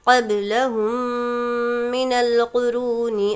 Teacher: मीम साकिन के बाद मीम इदग़ाम शफ़वी गुन्ने के साथ मिलाकर पढ़ेंगे।